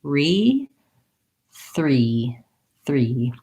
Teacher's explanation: Once you can do that, then you want to add the TH and be thinking of that R. So my tongue is ready to do the R, and the tip of my tongue just sneaks forward a little bit to do that TH.